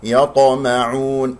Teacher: الطاء مقلقلة قلقلة صغرى في وسط الكلام، وهي مفخمة مرتبة رابعة مرتبة الساكن